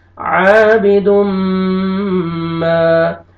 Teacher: تنوین کے بعد حروف یرملون میں سے میم ہے، آپ نے یہاں پہ غنہ کرنا ہے